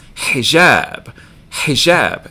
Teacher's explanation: over here so here we've reversed the stress on the syllables first syllable doesn't get stress second one does